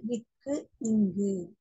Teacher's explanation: நாவின் முதல் பகுதி அன்னத்தின் அடிப்பகுதியை பொருந்துவதால் பிறக்கும்